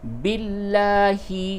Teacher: لام کو باریک پڑھیں گے کیونکہ لام سے پہلے زیر ہے